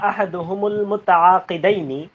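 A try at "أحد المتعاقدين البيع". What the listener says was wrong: আহাদুহুম না, ইযা আওজাবা আহাদু, এখানে আহাদুল মুতাআকিদিন, আহাদুল শব্দটা মুতাআকিদিনের দিকে এজাফত হইছে, মানে এই তানবিন হবে না। আহাদুল মুতাআকিদাইনিল বাইআ।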